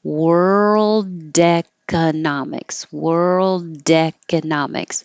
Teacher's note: If I were going to say a word with a vowel after it, you would hear the D because you're releasing the airflow